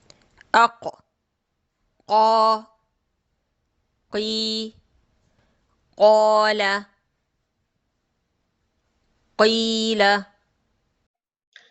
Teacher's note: Letter qaf is coming from the soft palate. To make it easy for you, letter qaf is the heavy letter.